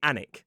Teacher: two syllables, stress on the first · So it's like we drop the L and we drop the W and we just say Alnwick.